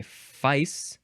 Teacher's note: Also, you can say feis without the T sound